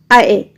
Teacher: आए जो है वो कंठ और तालव्य दोनों जगहों से उच्चारित होता है